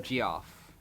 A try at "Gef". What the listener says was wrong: Yeah. No, not O. No O. Jeff. Jeff. Jeff. Is it Jeff? But it's Jeff. Jeff.